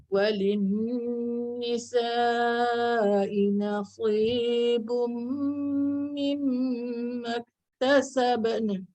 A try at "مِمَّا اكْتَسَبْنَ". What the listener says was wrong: Dia dah bunyi nun tapi terlebih sikit. Mimma iktasabn.